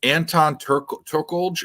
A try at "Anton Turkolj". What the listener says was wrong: Turkali. Yeah, it's Swedish, so the J is pronounced like an I. It's Turkali.